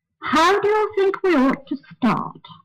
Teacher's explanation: that sentence starts on a fairly high note and it continues on that saying note until it reaches the · the word ought is said on a slightly lower note and the sentence continues on that lower note until it gets to the very last syllable